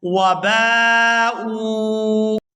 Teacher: یہاں با کو الف مدہ کی وجہ سے کھینچ کر ادا کریں گے اور آگے حمزہ کو واو ساکن کے ساتھ ملاتے ہوئے کھینچ کر ادا کریں گے کیونکہ یہ واو مدہ ہے.